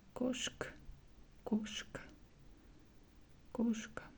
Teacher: For example, word Koshka is a cat, and here we also see A, but stressed vowel here is O, so we pronounce koshka, koshka. We also hear the letter A, but it's like a little bit reduced, so it's like a half of this letter.